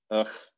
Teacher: the word that we often write like this, ugh, that has a velar fricative in it. · they say Bach and actually pronounce it with the velar fricative